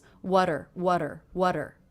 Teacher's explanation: the T here is now coming between two vowel sounds and I'm making that a flap T sound which sounds like the D between vowels